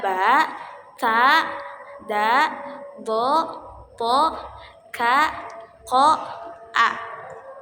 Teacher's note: Nah, untuk bunyi berdasarkan sifatnya yang pertama ada bunyi letupan atau hambatan. Bunyi ini dihasilkan dengan cara arus udara ditutup sehingga udara terhenti seketika lalu dilepaskan kembali secara tiba-tiba.